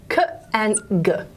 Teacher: So, so that's the velum, and the sounds that are made at the velum are k and g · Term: velar